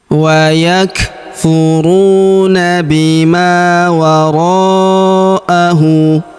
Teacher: Huruf ma kita panjangkan 2 harokat karena terdapat alif di depannya